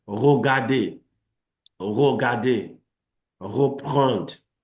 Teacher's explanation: the end of my tongue is coming against what we call the luette, and there is a vibration. So we call it roulé or vibrant.